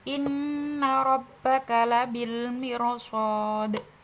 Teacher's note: Rabbuka, ro-nya dibaca tafkhim karena berharokat fathah, jadi harus tebal.